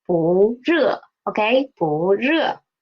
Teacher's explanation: It is a fourth tone word, but because it is before a fourth tone syllable 热, so it will change to second tone. So 不热, okay?